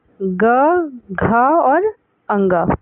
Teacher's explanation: सघोष का अर्थ है स्वर तंत्रियों में श्वास का कंपन। स्वर तंत्र में जब कंपन होता है तो सघोष ध्वनियाँ उत्पन्न होती हैं